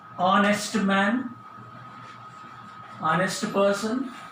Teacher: We don't pronounce H, starts with O